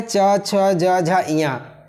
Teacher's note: इनका उच्चारण स्थान तालु है। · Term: तालब वर्ण